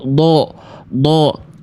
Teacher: memonyongkan huruf dod ketika fathah mengejar bunyi vokal O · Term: mengejar vokal O